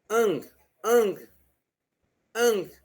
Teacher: Veja que você ainda consegue pronunciar o G. Mesmo que ele não esteja muito forte, mas consegue. Ele ainda aparece, entendeu?